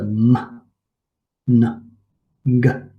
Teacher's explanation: Then we have the nasals, and this is where the articulators stop the airflow and there's a release of air through the nose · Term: nasal sounds